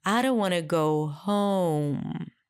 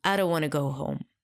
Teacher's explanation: in English 'home' was higher in pitch